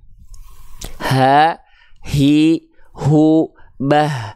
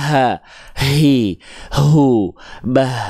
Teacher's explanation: hak besar dilafalkan dari pangkal tenggorokan